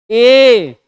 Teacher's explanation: ए जब बोलते हैं, आप देखिए ई बोले थे तो ई में क्या था, जीभ पर दबाव पड़ता है। वैसे ही जैसे आप बोलेंगे ए, तो तुरंत जीभ के तालु पर क्या होगा, दबाव पड़ेगा। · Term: कंठ तालव्य